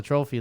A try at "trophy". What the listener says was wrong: You're adding an L to the word trophy again. Yeah, you said, we'll go back. You say trophy.